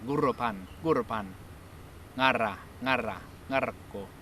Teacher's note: You just trill the R.